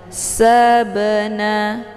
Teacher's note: Kemudian ba sukun yang terdapat di pertengahan kalimat ini dinamakan dengan qalqalah sughra. Cara bacanya, ba-nya dipantulkan dengan pantulan ringan. Sabana, keluar bunyi be. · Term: Qalqalah Sugra